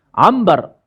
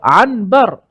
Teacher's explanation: Kita terus tukarkan nun kepada mim. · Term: iklab